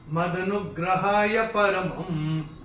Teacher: म के ऊपर अनुस्वार, चूंकि चरण की समाप्ति पे आ रहा है तो इसका उच्चारण केवल और केवल म ही होगा